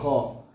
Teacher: ഹോ തൊണ്ടയുടെ ഏറ്റവും മുകളിലായിട്ട് വരും